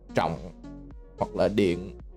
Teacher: You can still feel your throat kind of go down whenever you say tưởng or anything with a dấu nặng, like trọng hoặc là điện, right?